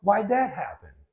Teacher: it's only natural to drop that D every now and then